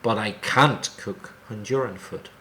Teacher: when it's negative, stress the word can't more than the verb.